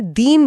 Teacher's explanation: अगर बोलते समय इसमें सांस थोड़ी लंबी कर दी जाए और इसे दीन बोल दिया जाए तो इसमें दीर्घ ई लग जाएगी